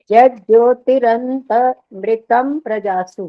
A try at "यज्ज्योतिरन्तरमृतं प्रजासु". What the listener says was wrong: नहीं, अटक गए, र वाला गलत हो गया, दोबारा बोलो।